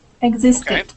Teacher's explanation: word is exist okay and we would pronounce that t but when we add the ed ending on the end and we make it past tense the word is now existed and that t then changes to a uh d sound